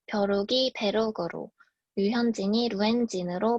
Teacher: 다섯 번째는 강원도와 경상도에서 나타나는 이중모음의 단모음화입니다